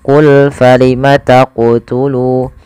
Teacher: Maka ketika melafalkan huruf qaf di sini harus memantul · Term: qalqalah